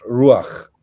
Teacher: The accent is on the U, and it's just a short A, and the A is written to the right of the chet, not straight underneath it. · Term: patach furtivum